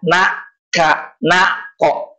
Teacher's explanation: Na di depan, kaf, kop di pangkal lidah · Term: ab'ad